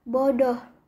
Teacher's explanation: direalisasikan sebagai bunyi O tengah bawah belakang bundar seperti pada kata bodoh.